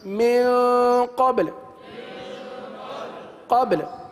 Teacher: با پر قلقلہ کریں اور لام کو ساکن کر دیں